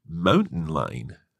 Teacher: She kind of didn't pronounce the T.